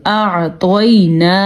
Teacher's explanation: اب یہاں پہ ہم نے کیا کیا دیکھا ہے، یا لین ہے یہاں پہ اور طوا جو ہے وہ پر پڑا جائے گا کیونکہ طوا حروف مستعلیہ میں سے ہے، اور یہاں پہ کو یہ بھی لین ہے، واو ساکن ہے اور اس سے پہلے زبر ہے، یا ساکن ہو اور واو ساکن ہو اور اس سے پہلے حرف پہ زبر ہو تو وہ یا لین ہوتا ہے اور واو لین ہوتا ہے.